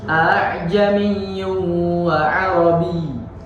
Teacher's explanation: membaca huruf hamzah yang kedua dengan ringan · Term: tashil